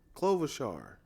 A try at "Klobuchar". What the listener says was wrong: Did you put a V in it?